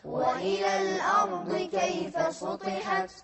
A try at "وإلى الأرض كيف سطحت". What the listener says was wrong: سطحت لا في سين مو صاد. وإلى الأرض كيف سطحت سطحت سطحت